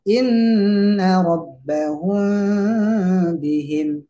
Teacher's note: Jadi tidak sempurna, jadi sama dengan bacaan ikhfa syafawi, yaitu membaca mim mati ketemu dengan huruf ba, maka mimnya disamarkan